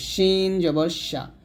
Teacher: জিহ্বার মধ্যখান তার বরাবর উপর তার সঙ্গে লাগবে